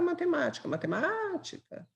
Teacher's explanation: proparoxítonas e a sílaba tônica é a anti penúltima